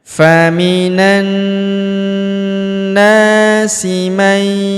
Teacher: huruf nun sukun bertemu huruf ya berharokat tasydid, maka nun sukunnya melebur ke huruf ya yang berharokat tasydid, kita tahan dan tekan